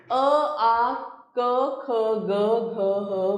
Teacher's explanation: तो हम देखते हैं वर्ण अ, आ क, ख, ग, घ, ह, विसर्ग कंठ से मुख खुला जीभ की जड़ कंठ से लगी हुई